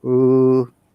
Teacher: lower intonation that goes down